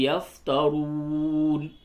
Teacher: را کو پر کر کے پڑھیں، واو مدہ ہے کھینچ کر کے پڑھیں